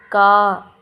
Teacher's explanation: நாக்குடைய முதல் பகுதி மேல் அன்னத்துல ஒட்டும்போது கா என்னும் எழுத்து பிறக்கிறது